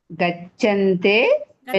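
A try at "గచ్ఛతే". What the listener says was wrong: గచ్చంతేనా నకారం ఉందా? గచ్చతే.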